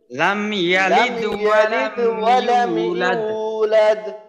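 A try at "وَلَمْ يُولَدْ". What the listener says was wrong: আচ্ছা, এখানে যেন ইউ না হয়, ওয়ালাম ইউলাদ, ওয়ালাম ইয়ার মাখরাজ থেকে ওয়ালাম ইউলাদ।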